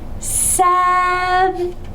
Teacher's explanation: It's a short vowel, but I need to enunciate or stress the first syllable. So this word is seven.